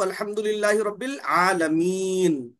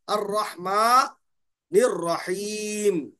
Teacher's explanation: آخری حرف کی جو بھی حرکت ہوتی اس کو گرا دیتے، گرا کے وہ جو وقف کرنے کا قاعدہ ہے اس اعتبار سے پڑھتے ہیں ہم۔ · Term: مد عارض